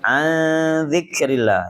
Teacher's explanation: ini ikhfa ausat ya, 3 harokat kita tahan, kita dengungkan. Dzikrillah, lafdzul jangan ditarkikan, ditipiskan.